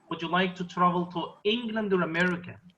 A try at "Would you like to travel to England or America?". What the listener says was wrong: America, like, close it. Would you like to travel to England or America? America? Lower your voice at the end, please.